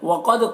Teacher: قاف کو پر پڑھیں گے، حروف مستعلیہ میں سے ہے، دال میں قلقلہ ہوگا۔